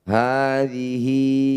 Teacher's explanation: Panjangkan 2 harokat. Hadhihi, hi atau hu yang dibaca panjang disebut mad silah qasirah. Panjangkan juga 2 harokat.